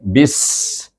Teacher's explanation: dengan Sin yang mati bunyi bis iitu berdesir bunyinya